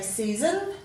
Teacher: we tend to give that a schwa sound at the end